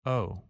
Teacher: If we are wrong about a small detail that's not too important, we usually say the word quickly and with a lower tone of voice